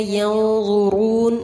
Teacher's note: نون ساکن کے بعد ضا ہے، اخفا کیا جائے گا